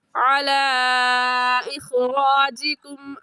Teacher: کھڑی مد بھی آ گیا، اور کھڑی مد کو 1 الف کی مقدار کھینچتے ہیں تو کل 4 الف کی مقدار کھینچ کر پڑھیں گے، کم یا زیادہ نہیں کھینچیں گے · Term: مد منفصل